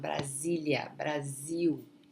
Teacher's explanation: the S between two vowels, the pronunciation is going to be Z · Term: Z sound